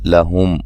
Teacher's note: میم ساکن کا اظہار ہے، غنہ نہیں کریں گے